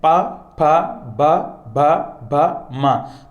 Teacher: तो बोलकर आप देख सकते हो दोनों होठों का उपयोग होता है साथियों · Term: ओष्ठ वर्ण